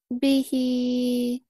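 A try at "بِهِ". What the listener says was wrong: But why you prolong it more? Okay, suppose we prolong Madsila Sugra. How many counts for this one? Two, but why you stretch it more than two?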